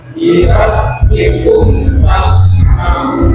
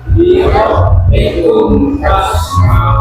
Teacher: jikalau ada mim mati kedepannya bukan huruf ba, bukan huruf mim, maka kumnya jangan dipanjangkan. Dalam arti kata jangan dilamakan. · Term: idhar sapawi